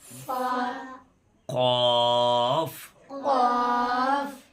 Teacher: جڑ زبان تالو سے مل کر قاف ادا ہوتا ہے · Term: بڑا قاف